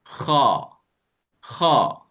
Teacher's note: Huruf kha dia tak muncung juga. Ketika kha berbaris atas dia tak muncung.